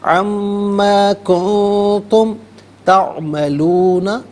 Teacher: ان ما نہیں پڑھیں گے بلکہ عما کنتم میں نون ساکن اس کے بعد تا حرف اخفا ہے تو نون ساکن پر اخفا کیا جائے گا. اخفا کہتے ہیں ناک میں آواز لے جا کر گنگنانا.